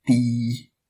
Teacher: It's a light T with no breath.